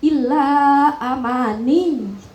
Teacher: illa amani itu cukup satu ketukan cuman ditambahi tekan saja ditekan saja jangan ditahan